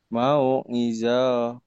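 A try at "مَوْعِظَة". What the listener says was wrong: Salah. Salah kalau hentikan ti. Ini nggak berlaku ya. dua patah. Dua kasroh enggak. Jadi sukun. Jadi mati. Mau'izah.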